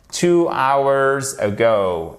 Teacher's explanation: Et on ne prononce pas le H